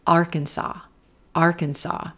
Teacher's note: Moving from our olive vowel into our purple shirt, R